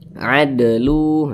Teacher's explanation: salah satunya huruf Dal apabila dia sukun maka dipantulkan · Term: qqah sugro